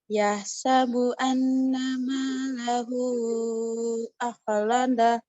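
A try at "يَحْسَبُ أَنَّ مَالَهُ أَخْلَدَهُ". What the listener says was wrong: Cuma nanti di bagian anna, nunnya tasydid. Maka dia ada gunnah. Gunnah itu panjangnya 2. Anna. Anna. Iya, anna.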